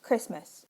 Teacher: the New Zealand English word for Christmas had two consonants in the onset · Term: complex onset